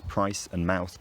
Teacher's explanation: the vowels in the words price and mouth broke into diphthongs